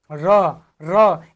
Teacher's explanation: जिन व्यंजन के उच्चारण में जीहवा को दो-तीन बार कंपन करना पड़े, वह जो है प्रकंपित व्यंजन कहलाता है। जैसे र का उच्चारण करके देखिए, र बोल के देखिए, र इसमें क्या हो रहा है?